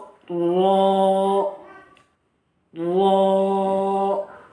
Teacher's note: زبان کا کنارہ اور کچھ زبان کی پیٹھ اوپر کے درمیانی دانتوں کے مسوڑوں سے لگا کر ادا کیا جاتا ہے. زبان کا کنارہ ہے اور کچھ پیٹھ ہے، یہ زبان کی کچھ پشت ہے، یہ ہے.